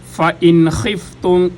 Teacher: گلے کے سب سے اوپر سے خا ادا ہوتی ہے، غین اور خا دونوں کا ایک ہی مخرج ہے